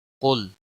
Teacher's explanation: लाम को हिलाना नहीं, क़ाफ को मोटा पढ़ना है। हिलाने का मतलब ये है कि इस पर कलकला न हो।